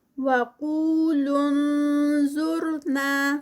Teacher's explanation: وقو جو ہے وہ قاف ہیوی ہوگا اور ساتھ میں 2 کاؤنٹس واو مد۔